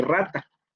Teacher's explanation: Rata es vibrante múltiple, aproximante, déjenme ver por acá. Vibrante múltiple sonoro alveolar.